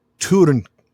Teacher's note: is pronounced like the German U with the umlaut. So you make an U shape with your lips, so U, but then you say E.